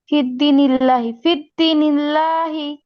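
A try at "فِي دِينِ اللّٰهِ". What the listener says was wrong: ফা টান হবে দালেও টান হবে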